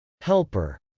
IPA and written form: hˈɛlpɚ (helper)